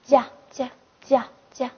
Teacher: 发音方法是不送气的清塞音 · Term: 不送气清塞音